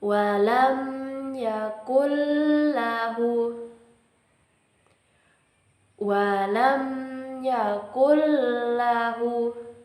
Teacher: Idham bilagunah yaitu jika nun mati atau tanwin bertemu dengan huruf lam dan ro. Maka harus dibaca tanpa disertai dengung di hidung.